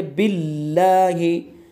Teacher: और आगे है बिल्लाहि, अल्लाह का लाम है, अल्लाह के लाम से पहले ज़ेर है, तो इसको हम बिल्लाहि मुँह भर के नहीं पढ़ेंगे बल्कि इसको बारीक पढ़ेंगे